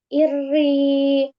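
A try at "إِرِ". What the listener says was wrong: Ya masih tebal ya. Ir, iri. Jadi jangan iri. Nah, kalau gini berarti naik pangkal lidahnya. Nah, tebal jadinya ya. Iri. Ini naik. Tipis. Iri.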